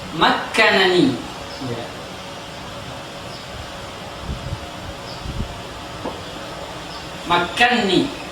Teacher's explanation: nun yang pertama dimasukkan ke nun yang kedua, sehingga dia menjadi makkanni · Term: idgham kabir